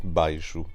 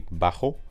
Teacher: remember that that SH sound shifts into a [x] sound in Spanish